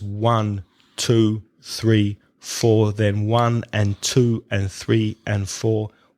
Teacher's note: The time it takes me to say that is more or less the same because the other words are not stressed. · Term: stress timed